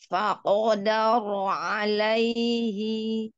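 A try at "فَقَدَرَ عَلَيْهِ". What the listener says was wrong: Sih pakai bibir. Jangan dibantu. Fakodaro alaihi.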